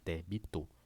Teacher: Débito, se você separar, débito, sílaba tônica é a primeira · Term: proparoxítona